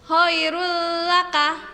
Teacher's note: dhomah time bertemu dengan huruf lam maka cara membacanya Choirul laka lamnya ditasydidkan dan tanpa mendengung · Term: idgham bilagunnah